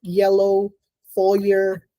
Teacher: It's voiced, it's unaspirated, it's palatal, it's a glide. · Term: palatal glide